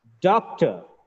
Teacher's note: Doc is stressed. Ter is unstressed. It's weak. When one syllable is stressed, another syllable becomes weak.